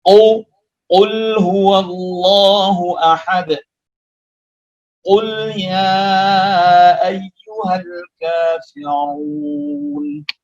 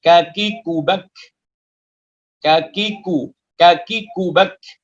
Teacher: Huruf qaf posisinya ada di atas, sedangkan huruf kaf itu di bawah, sehingga melahirkan bacaan yang harus tipis.